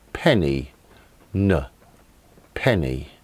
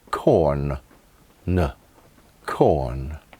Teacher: sides of the front of the tongue against the side teeth the soft palate drops allowing air to pass out through the nose the sound is voiced so the vocal cords vibrate while producing it